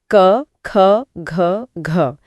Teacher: ये कंठ यानी गले से बोला जाता है। हाँ, गले के एकदम पीछे से आवाज आती है।